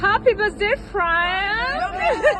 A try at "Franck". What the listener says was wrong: Il y a que c'est Franck, not Frank. Il est français, il faut le dire en français. si on dit Franck. Parce qu'il est français. Si vous dites Franck, il sait même pas que tu lui parles.